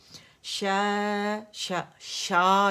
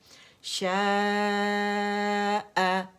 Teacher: ہم نے حمزہ کو وہاں سے نہیں ادا کرنا جہاں سے مد ادا ہوئے، اس کو اپنے مخرج سے ادا کرنا ہے